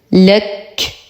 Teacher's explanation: لو وقفنا على الكاف نعطيها الهمس